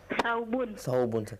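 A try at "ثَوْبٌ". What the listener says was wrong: Thawbun. Afwan, ana sami'tu sabun bis-sad. Thawbun.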